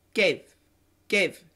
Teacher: in daily English, what we do with this long vowel diphthong, we get rid of the second part. We get rid of this part, and we only keep the first part.